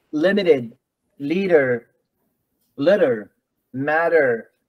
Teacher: the syllable that begins with the letter T is not stressed the t is normally pronounced as d